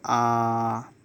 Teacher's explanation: तो बड़ा आ है, मतलब पूरा मुंह खुल जाएगा बड़े आ में। विवृत का मतलब ये आप समझिएगा। · विवृत स्वर या निम्न स्वर ऐसी ध्वनि होती है जिसमें जीवा को मुख में जितना संभव हो सके उतना नीचे और तालु से दूर रखा जाता है। जैसे आ, तो बड़ा आ है, मतलब पूरा मुंह खुल जाएगा बड़े आ में।